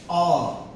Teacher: जिन स्वरों के उच्चारण में वायु जीभ के मध्य भाग पर दबाव बनाती है, उसे मध्य स्वर कहते हैं। जैसे अ, अब देखें, अ बीच में जो है वह दबाव बन रहा होगा।